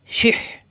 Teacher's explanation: জের শি সহজ হবে শি শি মিলবে হা এর সাথে শিহ হা এর মাকরাস কণ্ঠনালীর মাঝখানে